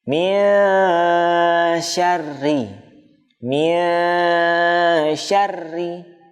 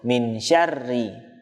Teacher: Nunnya dibaca dengan jelas. Harusnya nun tidak dibaca dengan jelas, samar. Samarnya antara huruf nun dan huruf shin. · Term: ikhfa hakiki